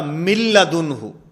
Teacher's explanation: یہاں پر ادغام ہے اور یہ ادغام بلا غنہ ہے. ادغام بلا غنہ کا معنی کہ ادغام تو ہوگا لیکن یہاں پر غنہ نہیں ہوگا